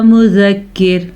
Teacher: یہ مذکر کی جو را ہے یہ باریک پڑھی جائے گی وقف کی صورت میں. اگر ہم وقف نہیں کریں گے تو یہ را پر پڑھی جائے گی.